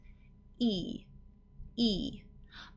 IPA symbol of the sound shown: iː